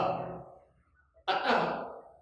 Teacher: ये आधे ह की आवाज देते हैं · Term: विसर्ग